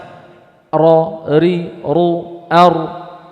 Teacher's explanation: Adanya getaran pengulangan. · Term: takrir